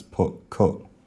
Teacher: in the north of England, uh there would only have been one vowel in both of these words